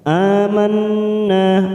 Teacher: ada nun yang bertasdid bacaan gunnah musyaddadah, 3 ketuk kita tekan. Manna, nanya kita panjangkan 2 harokat karena ada fathah diikuti alif.